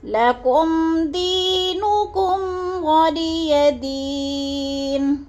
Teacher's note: وَلِيَ دِينِ، ادھر وَلِيَ دی میں یا مدہ ہے، یا ساکن سے پہلے دال ہے، دال کے نیچے زیر ہے تو ادھر یا مدہ، یا مدہ کو 1 الف سے 2 الف کے برابر لمبا کریں گے